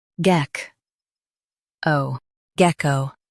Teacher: Emphasize geck and keep o clear.